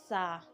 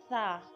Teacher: जबान का सिरा और ऊपर के दांतों के अंदरूनी किनारे से अदा होता है सा र्फ को नरमी के साथ पढ़ते हैं ताकि सीटी की